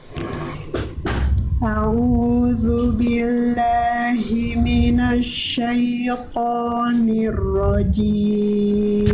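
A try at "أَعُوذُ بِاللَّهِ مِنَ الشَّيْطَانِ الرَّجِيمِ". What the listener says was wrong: Sekali lagi Bunda, jelaskan ainnya. hamzah a, ain dari tengah tenggorokan au, jangan au. Nah, itu nggak jelas ainnya. Rasakan ditekan bagian tengah tenggorokan kita bunda. A'udzu billahi minasyaitonir rajim.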